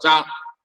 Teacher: ക കഴിഞ്ഞ് ലേശം കൂടി മേലെ പുറപ്പെടും